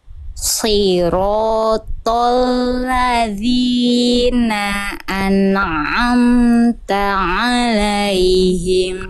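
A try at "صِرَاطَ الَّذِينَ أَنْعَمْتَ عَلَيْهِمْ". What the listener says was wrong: Oke, tinggal di nun sukun ketika berjumpa dengan ain, jangan an'amta alai.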